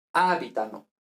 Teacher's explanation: aquí es sobreesdrújula, es decir, el acento está en la cuarta sílaba contando desde el final